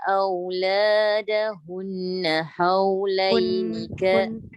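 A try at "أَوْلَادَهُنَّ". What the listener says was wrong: Hun tu dengung dulu.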